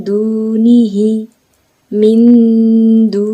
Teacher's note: nantinya mendekati bunyi n dan suara berdengung lalu ditahan dua harakat atau dua ketukan · dibaca samar-samar antara idhar dan idgham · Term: ikhfa aqrab